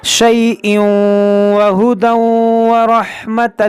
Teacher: دیکھیں یہاں پر ادغام ہوگا, تنوین کے بعد واو ہے